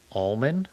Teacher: you're not supposed to say the L.